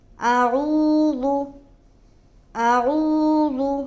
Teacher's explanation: پہلا حرف حمزہ ہے اور دوسرا حرف عین ہے۔ عین جو حلق سے نکلتا ہے اور حمزہ کو منہ سے نکالیں گے۔